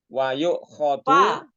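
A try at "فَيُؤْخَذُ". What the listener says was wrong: Pakai fa, bukannya wa. Fayu khozu.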